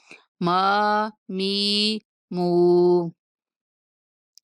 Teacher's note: ناک میں آواز نہیں جائے گی میم کی، ما می نہیں کہیں گے، ما می مو۔